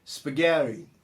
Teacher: Reparem que os americanos gostam de transformar desses T's aí em um som meio R. Spaghetti, em vez de spaghetti.